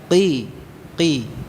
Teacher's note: Ini diucapkan tanpa mengalirkan nafas artinya dibaca dengan jahr bukan hams artinya apa dibaca dengan jahr menahan ya nafasnya ya tidak diucapkan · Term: lima huruf Qalqalah